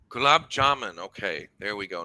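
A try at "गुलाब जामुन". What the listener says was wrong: Gulab jamun. Gulab jamun, not man. It's gulab jamun. Un, u, gulab jamun. A gulab jamun. It's not. Yes, it's something like that. The moon in the sky. The oh is too lengthy. If we cut it short, it will become gulab jamun.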